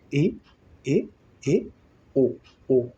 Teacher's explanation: प्रतीत हो रहा है कि बंद हो जाएगा अभी मुखद्वार, लेकिन आधा ही आके रुक जा रहा है